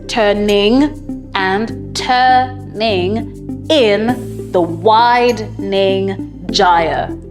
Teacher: If you look carefully at the ending words in this poem, they have no rhyming pattern, but each line of the poem is an iambic pentameter. It has 10 syllables with a pattern of unstressed, followed by the stressed syllable.